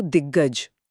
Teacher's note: और ग एक घोष वर्ण है कंपन के साथ। जब दिक का अघोष क गज के घोष ग से मिलता है तो बोलने की आसानी के लिए हमारा मुंह क को भी घोष यानी ग में बदल देता है